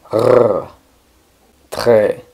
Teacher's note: la r en francés Es una r que se produce en la garganta es un movimiento similar al de hacer gargaras